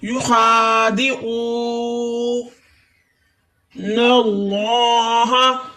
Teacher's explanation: خا کو تھوڑا سا موٹا کریں گے، آئین کو حلق کے درمیانے حصے سے ادا کریں گے۔ او پہ واو مدہ ہو رہا ہے، واو ساکن اس سے پہلے پیش۔